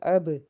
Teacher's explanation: با حرف قلقلہ کا حرف ہے، آواز واپس لوٹ کے آئے گی